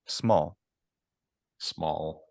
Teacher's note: I think my L is an alveolar there I think it's more intense your l yeah I also think